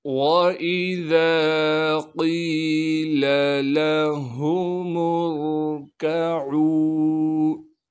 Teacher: قاف کو موٹا کر کے پڑھیں گے، پھر قاف کے بعد یا مدہ ہونے کی وجہ سے قاف کو ایک الف کے مقدار کھینچیں گے · واو کو بغیر کھینچے پڑھنا ہے، واو کے بعد حمزہ کو بغیر جھٹکے کے پڑھیں گے · وَإِذَا قِيلَ لَهُمُ ارْكَعُوا، اس لام کو بغیر کھینچے پڑھیں گے، لام کے بعد ہا ہے، اسے صاف کر کے ادا کرنا ہے، پھر ہا کے بعد میم کو بغیر کھینچے پڑھیں گے، میم کو آگے را ساکن سے ملانا ہے